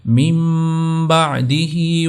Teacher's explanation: نون ساکن کی جو آواز ہوگی اس کو چینج کر دیا جائے گا میم ساکن کی آواز کے ساتھ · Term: اقلاب